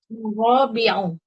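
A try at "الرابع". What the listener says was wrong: Pakai alif lam. Ar-rabi'.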